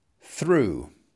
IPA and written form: θruː (through)